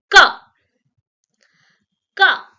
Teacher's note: Velar sounds that are produced in the back of the mouth area.